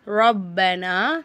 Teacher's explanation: இப்போது இங்கே ஃபஸ்ட்டு பாருங்கள், ரொப்பனா சட்டங்கள் பார்த்துடலாமா? ரொப்பனா ராக்கு ஜப்பர் வந்ததுனால ராவை நல்லா வல்லினமாக சொல்லணும்